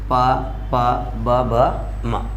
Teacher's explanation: ये सब कहाँ से बोले जाते हैं, ओष्ठ से बोले जाते हैं